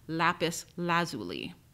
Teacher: the standard dictionaries in the United States place the stress of the second word on the first syllable